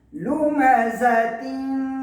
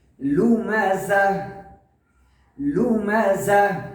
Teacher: گول تا وقف میں ہا بن جاتی ہے.